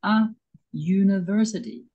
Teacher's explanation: The U at the beginning of university sounds like U, a consonant sound. So we say a university.